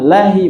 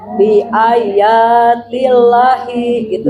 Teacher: La-nya panjang. Lafaz Allah sebutnya panjang.